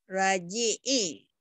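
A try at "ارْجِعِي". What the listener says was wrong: Bukan roji'i. Ini barisnya di bawah ini. Ini fil amar. Irji'i ila rabbiki radiyatan mardiyah.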